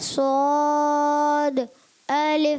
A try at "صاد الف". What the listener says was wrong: اچھا سواد ہونٹ گول نہ کریں, سواد بغیر ہونٹ گول کے موٹا بھی کرنا ہے. زبان کی جڑ اوپر اٹھائیں, درمیان بھی اوپر لے جائیں اور پڑھیں صاد, منہ بھر کے. صاد الف